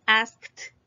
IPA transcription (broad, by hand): ɑskt